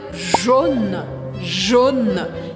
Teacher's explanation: E cuidado para você não falar Jana mais aberto.